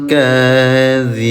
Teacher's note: Mad asli panjang dua harakat. Karena di ujung ayat boleh panjangnya lebih dari dua harakat ya, boleh empat, boleh lima harakat ya.